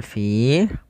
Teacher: pada lafal fi ada kasrah pada lafal finya bertemu dengan ya sukun maka kita namakan dengan mad thabi'i. Panjangnya adalah panjang dua harakat.